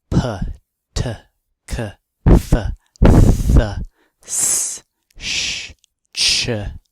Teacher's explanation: those sounds will not vibrate your vocal cords they are made more in your mouth and the vocal cords in your throat do not vibrate but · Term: voiceless